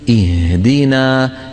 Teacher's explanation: بعطي الهاء حقها من ايه من الرخاوه ولا نبعد الوترين الصوتيين في الحلق عن بعضهما جدا